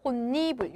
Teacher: 니은 앞에 디귿이 비음화가 일어나서 혼니불